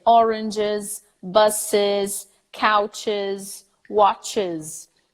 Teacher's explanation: So it's actually an IZ at the end.